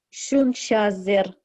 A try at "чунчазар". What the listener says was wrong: Чунчазар. Ну, там, я понимаю, там чунчезер, это сагайский диалект чунчезер, да? Ну, литературный вариант чунчазар. Пока давайте возьмем литературный.